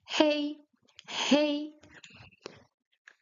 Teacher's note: In Chinese, the H is voiced, so you pronounce it hey, hey, which means it's like the English hey when you're calling someone from afar.